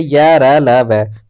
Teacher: जिन व्यंजनों का उच्चारण स्वर और व्यंजन के बीच का होता है उन्हें अंतःस्थ व्यंजन कहते हैं